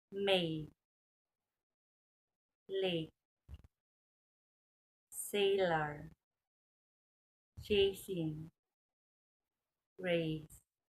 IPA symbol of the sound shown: e